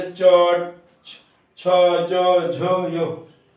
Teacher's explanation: तालव्य मतलब आपकी जीभ तालु से टकराई, इसलिए तालव्य